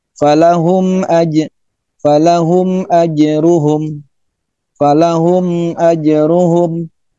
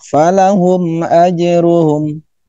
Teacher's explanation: Kemudian bagaimana cara membacakan mim mati yang dihukumi dengan izhar syafawi? Yaitu membacanya tidak disertai dengan dengung, bahkan tidak boleh dengung